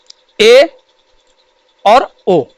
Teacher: अर्धसंवृत्त। इसमें मुख आधा बंद होगा।